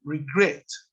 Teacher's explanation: regret es un verbo que tiene más de una sílaba y cuya última sílaba está acentuada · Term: acentuación